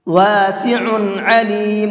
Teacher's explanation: دونوں جگہ پر عین ہے، عین نکال کر کے پڑھیں گے، حمزہ نہیں پڑھنا ہے